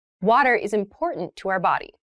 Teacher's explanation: that first T is actually reduced it sounds more like a D in fast speech